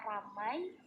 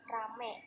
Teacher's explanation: Terjadi kesalahan pengucapan pada kata ramai menjadi rame dengan perubahan bunyi diftong I menjadi bunyi vokal E